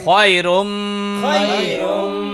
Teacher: র মিম দুই পেশে রুম গুন্না করিয়া পড়িতে হয়